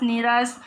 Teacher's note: विसर्ग का लोप भी हो जाता है